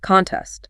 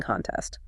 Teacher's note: The noun form is the competition itself. Contest stress on con.